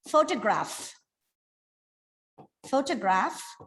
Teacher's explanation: in the word photograph, the first syllable is stressed. When it becomes photography, the second syllable is stressed.